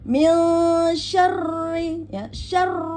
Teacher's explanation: Jadi dia nadanya dinaikkan pada saat pengucapan huruf ro bertasdid, ya, dinaikkan.